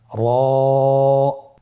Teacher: র হরফটি এখানে আমরা পর উচ্চারণ করব। মোটা করে উচ্চারণ করব। এবং র হরফটি এক আলিফ টেনে পড়ব।